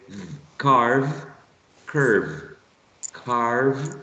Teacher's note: With a v. So you put your upper teeth and press the bottom lips and you say v